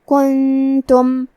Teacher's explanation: کلمت کنتم میں نون ساکن ہے، پھر حرف التا ہے، یہاں حکم ہے اخفاء تو ہم یہ حکم کو غنہ کے ساتھ ادا کریں گے